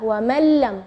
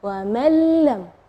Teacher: Yang kedua adalah idgham bila gunnah, tidak ada dengung ya.